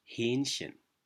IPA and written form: ˈhɛːnçən (Hähnchen)